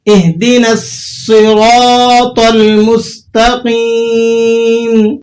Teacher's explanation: مستقیم کے اندر قاف کے بعد جو یا ہے یہ یا مدہ ہے، تو آپ اسے ایک دو حرف تک کھینچ کر ادا کریں گے